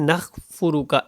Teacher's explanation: اب یہاں پہ کاف کی جگہ خا کو جو ہے وہ پڑھ دیا جاتا ہے، نَخْفُرُكَ، ایسے نہیں پڑھیں۔